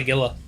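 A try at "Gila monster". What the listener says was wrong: no a g is an H sound J is an H sound you dumbass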